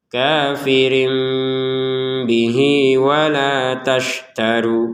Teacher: Jika kita tidak menggabungkan maka kita mengucapkannya bih situ ya kafirin bih seperti itu. Jadi kalau kita menggabungkan maka bihinya untuk h-nya harakat kasrah kita panjangin dua harakat